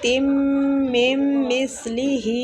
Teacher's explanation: میم جو ہے یہ تشدید والی ہے تو اس پہ غنہ کریں گے۔